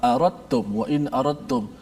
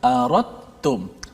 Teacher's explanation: Kat situ tak bunyi pun dari sudut sebutan huruf dal, tapi dekat tulisan ada huruf dal. Yes. Okey, kaedah bacaan apabila huruf dal mati bertemu dengan ta, maka dal itu kena idghamkan ke dalam huruf ta. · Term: idgham mutajanisain